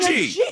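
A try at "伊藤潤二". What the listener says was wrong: Gunji. Not saying Gunji. G and J.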